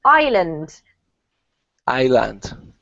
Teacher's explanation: it has an S, but we actually don't pronounce the S. It's silent, so it's pronounced island.